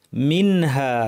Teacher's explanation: এই নুনকে স্পষ্ট করে উচ্চারণ করতে হবে, যাকে বলা হয় ইজহার